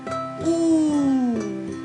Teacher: this is a long ooh sound and the sound is same as in the English words pool or Moon